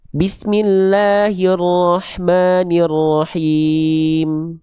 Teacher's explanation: Maka ayat pertama kalau berhenti mad arid lisukunnya dibaca 4 harokat